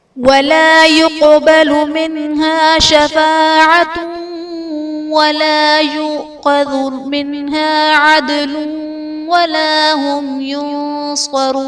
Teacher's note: وَلَا يُقْبَلُ مِنْهَا شَفَاعَةٌ ولا يؤخذ منها عدل ولا هم ينصرون شفاعت ولا میں تا پر دو پیش کی تنوین، تنوین کے بعد حروف یرملون میں سے واو ہے تو یہاں پر ادغام مع الغنہ کا قاعدہ ہوگا۔ ولا یؤخذ میں حمزہ ساکنہ ہے، جھٹکا دے کر پڑھیں گے۔ · یقبل میں قاف حرف قلقلہ ساکن ہے تو یہاں پر قلقلہ خوب ظاہر کریں گے۔